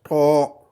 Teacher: disons un T au fond de la gorge